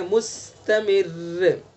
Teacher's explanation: را مشدد ساکن سے پہلے زیر ہے میم کے نیچے، اس لیے اس کو باریک پڑھیں گے